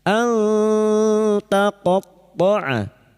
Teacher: kita samarkan menjadi nun sukun dan mendengun selama tiga harakat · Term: ikfa hakiki